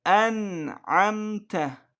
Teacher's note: İzhar harflerinden olduğu için burada İzhar olmuş yani bu da Nunu açık bir şekilde okuyoruz